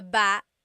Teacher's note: Emphasis is on the second syllable